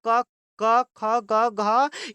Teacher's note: कंठ से हम लोग पूरा क क ख ग घ, ये सबको हम लोग कंठ से बोलते हैं।